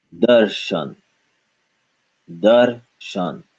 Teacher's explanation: Not darashan, but darshan, because we got rid of the a.